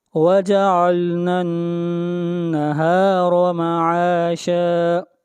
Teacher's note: را کو موٹا پڑا جائے گا، را کے اوپر زبر ہے